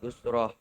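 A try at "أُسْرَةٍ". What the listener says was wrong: Usrotin. Dibacanya hidup aja.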